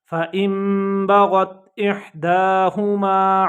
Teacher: نون کی آواز ہے نون ساکن کی، یہ دیکھیں میم سے بدل گئی ہے